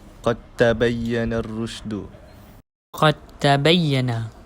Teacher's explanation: saya tidak membunyikan huruf dal dan saya mematikan huruf dal dan terus memasukkan huruf ta dan ada syaddah di situ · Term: idgham mutajasinain